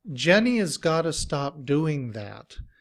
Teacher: But in reduced form, has becomes us with the schwa, which sounds like us. And we combine that with got to, but instead of the oo in to, we say and we make t.